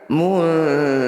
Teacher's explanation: Ru panjangkan 6 harokat, kemudian huruf terakhir sukunkan. Muntaziruna, ketika dihentikan muntazirun. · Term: mad arif disukun